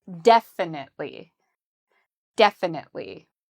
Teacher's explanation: this adverb has the stress on the first syllable. So we would say very strong and loud.